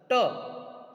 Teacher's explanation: जैसे आपने बोला ट, जब आप टा बोलते हैं तो आपकी जीभ, आपकी जिह्वा तालव्य को स्पर्श करते हुए थोड़ी सी मुड़ती है।